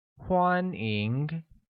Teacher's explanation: pronounced with the first tone on A and the second tone on I